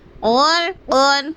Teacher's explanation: غین کو پر، را کو پر، قاف کو پر، یعنی موٹا پڑھنا ہے ہمیں